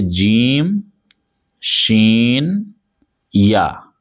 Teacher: تو زبان کا بیچ والا حصہ اور اسی کے اوپر جو تالو والا حصہ ہوگا وہاں پر جب زبان کو اٹھا کر ہم یعنی زبان کا بیچ والا حصہ اٹھا کر ہم اوپر تالو میں ملائیں گے · زبان کے درمیان اور تالو کے درمیان سے ادا ہوتے ہیں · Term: حروف شجریہ